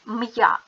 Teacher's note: звук м твердий приголосний звук а буква я позначає два звуки м'який звук й та звук а